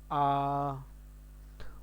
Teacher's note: बड़ा आ बोलते ही हमारा पूरा मुंह ओपन हो जाता है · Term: ओपन माउथ